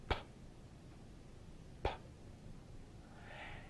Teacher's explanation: What they realized was that if you go far enough back, say to Latin, you will find words that are voiceless stops. That is, they are produced by stopping the air and then releasing it